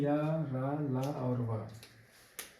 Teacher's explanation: तो दोस्तों हमने नंबर तीन पढ़ लिखा अंतस्थ यानी य, र, ल और व य, र, ल और व जो है का उच्चारण करते समय मुखांग पूर्णतया यानी पूरी तरीके से स्पर्श नहीं करते। को न के बराबर मुखा स्पर्श करते हैं। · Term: अंतस्थ व्यंजन